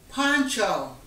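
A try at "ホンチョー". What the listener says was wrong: No, not poncho, not poncho. Honcho with an H. Honcho. It's like head honcho.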